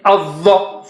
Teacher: dha is very thick and high